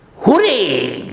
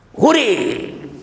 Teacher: We pronounce the word hooray with a rising intonation.